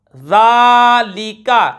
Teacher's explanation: کو پر پڑھیں گے، الف سے پہلے زبر، الف مدہ، ذالک، ذال کے اوپر کھڑی حرکات ہے، کھڑا زبر ہے، کھینچ کر پڑھیں گے